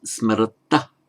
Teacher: It's not an aspirated ta, it's just an unaspirated ta.